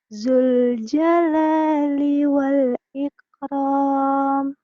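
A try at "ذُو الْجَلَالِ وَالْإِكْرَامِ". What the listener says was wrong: Ya, ini nya juga kurang rapuh ke za, jangan ke zai ya. Zul. Zul jalali wal di situ hamas ya. Ikram. Zul jalali wal ikram.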